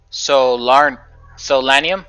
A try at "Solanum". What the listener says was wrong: Solanum? Solanum. Yep, there's no R. Just Solanum.